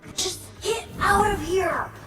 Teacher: The T sound in get is a stop T. We don't actually hear it. Then the T in out is followed by off, and merging together they form a flap T sound.